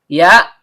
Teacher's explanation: Ya, tengah lidah naik memantul ke langit-langit.